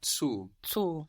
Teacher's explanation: Make that vowel longer, zu. · The U in German is a long sound like food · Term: long vowel